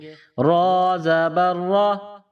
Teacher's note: را کے اوپر زبر ہے، را کو موٹا پڑھیں گے، را زبر را، پیچھے سے ملائیں گے۔